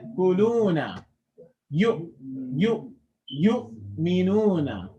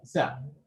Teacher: So in all of them, that little jerking motion, that's actually the vocal cords completely being closed off. So that is a Hamza that's Sakin.